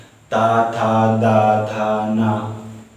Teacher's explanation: इस वर्ग के अक्षर को बोलने से हमारा जीभ दांतों को स्पर्श करता है। जैसे ता, था, दा ये सब बोलने से जीभ दोनों दांतों के बीच में दबाव रहता है, स्पर्श करता है। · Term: दंतव्य वर्ग